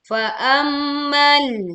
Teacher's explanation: Ya, tekan sukun lam tanpa memantulkan suara.